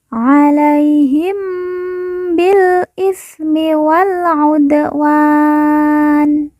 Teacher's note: huruf pemberhentian yaitu huruf nun alaihim Bil itmi Wal udwan kemudian Nun di ujung kita sukunkan atau kita matikan karena wakaf atau berhenti